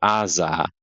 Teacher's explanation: Then the z sound, it makes a z if it's between vowels.